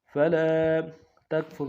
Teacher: فلا میں لام کے ساتھ الف مدہ ہے ایک انداز میں کھینچیں گے. فلا تکفر میں تا کو کاف کے ساتھ ملائیں گے، کاف نون سے ادا کریں گے، فا کو را کے ساتھ ملائیں گے، را کو موٹا کریں گے.